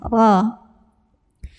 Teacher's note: Ra-nya ini dibunyikan secara tafkhim karena ra-nya ini berbaris di atas. Cara membacanya ditebalkan, pangkal lidah angkat ya